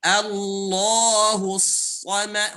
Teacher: Hu-nya tipis, so-nya tebal.